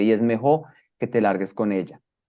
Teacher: Se supone que la doble L se pronuncia distinto a la Y. Nosotros como colombianos la pronunciamos igual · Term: yeísmo